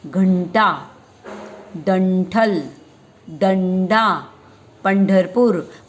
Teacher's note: मतलब हम न जैसे उच्चारते हैं ना, जीभ को गोल करते हैं, जिभेला आपण रोल करतो आणि पुढचा भाग जो आहे तो जिभेला रोल करून आपण काय करतो, तो आपल्या टाळूला वर चिकटतो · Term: ट वर्ग